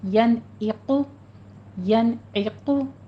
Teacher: قوف کو پر پڑھنا ہے، ضمہ ہے، ہونٹوں کو گول کرتے ہوئے ینعقو، ینعقو، عین کی آواز کسرہ کے ساتھ باریک کریں گے، وسط حلق سے نکالتے ہوئے